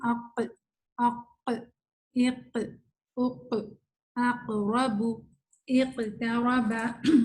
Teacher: جب سکون ہوتا ہے نا قاف پہ تو اسی طرح آواز پلٹ کی آتی ہے